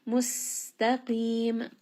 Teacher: Sin is going to have safir. It's going to have a little bit of that whistling. · It's going to have a little bit of that whistling. Mustaqim, qaf here is going to be heavy and then we end on a four count madd · Qaf here is going to be heavy, and then we end on a 4-count mad. And then mim has a tawassut and a sukoon.